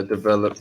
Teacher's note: The emphasis should be on the second syllable.